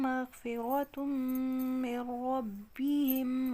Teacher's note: میم و شد غنہ ہو رہا ہے، ایک الف کے برابر لمبا کریں گے، نون کا را میں ادغام ہو رہا ہے، ادغام صغیر متقاربین ناقص